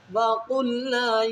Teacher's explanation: نون کو الف کی مقدار کھینچنا ہے، کیونکہ الف سے پہلے زبر ہے تو اس کو الف مدہ کہیں گے، تو اس کو ایک الف کی مقدار کھینچیں گے۔